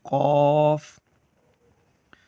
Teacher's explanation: حرف قاف کے ادا ہونے کی جگہ ہے زبان کی جڑ اور تالو کے نرم حصے سے ادا ہوتا ہے۔ حروف قاف زبان کی جڑ اور تالو کا جو اندر کا گلے کی طرف کا نرم حصہ ہے وہاں سے ادا ہوتا ہے، اس طرح سے قاف۔